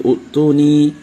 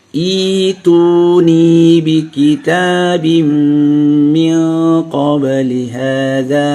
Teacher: Jadi ada penggantian hamzah itu menjadi ya, diganti. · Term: ibdal hamzah